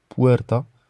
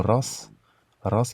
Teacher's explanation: c'est plutôt un R roulé espagnol comme dans le mot puerta